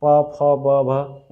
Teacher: ओंठ में प, फ, ब, भ ओंठ मिलता है, दोनों ओष्ठ व्यंजन हो गया · प मतलब दोनों ओंठ मिल रहा है, तो इसको ओंठ को ओष्ठ व्यंजन बोलेंगे